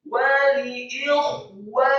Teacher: huruf kha-nya dibaca serak dan tadkhim sukun